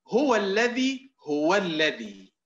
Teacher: وكأننا نزيد واوا، هذا هو النبر